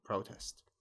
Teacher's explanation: If it's a noun, like here, it's a noun, it's protest with stress at the beginning on the first syllable, protest.